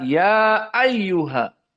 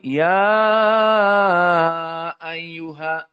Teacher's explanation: ya qasr Hanya dua harakat tidak seperti Wars yang panjang